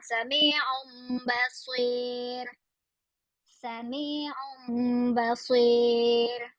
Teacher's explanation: So again tanwin atau nun mati bertemu dengan ba dengung.